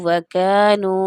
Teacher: یہ کاف باریکی سے ادا کیا جائے گا، پر کر کے اس کو نہیں پڑھیں گے